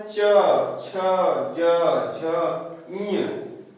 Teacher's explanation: च बोले हैं तो तालु जो है हमारा, जो जीभ है वो तालु से सटकर आता है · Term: च वर्ग